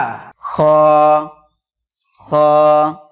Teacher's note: হালাকের বা কণ্ঠনালীর শেষ ভাগ হইতে উচ্চারিত হয় খ